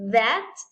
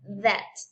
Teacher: And then we have TH, but with vibration.